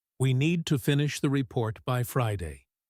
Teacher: In the second version, the stress on need tells you that this is non-negotiable.